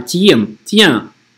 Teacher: Tiens, читаем как N-осовую. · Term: N-осовая